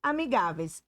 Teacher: É a penúltima sílaba mais forte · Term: paroxítona